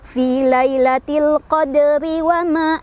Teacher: Ro-nya itu tipis atau dihukumi tarqiq ya, dibacanya tipis karena ro-nya barisnya kasroh. Tapi karena kita berhenti ya, maka ro-nya ini dibaca secara tafkhim atau tebal ya.